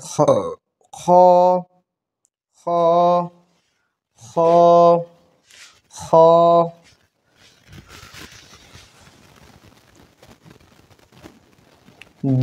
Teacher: হলকের শেষ হইতে গইন খ উচ্চারিত হয়